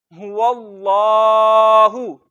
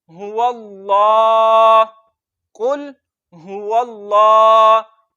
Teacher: यहां पर हमें कितने कायदे पता चले कि हमने वाव को लाम के साथ मिलाना है, वाव पर अलिफ मद्दा नहीं करना, वाव को लाम के साथ मिलाना है, लाम पे थोड़ा सा रुक कर पढ़ना है, और लफ्ज़ अल्लाह के लाम को मोटा पढ़ना है और एक अलिफ जितना लंबा करना है।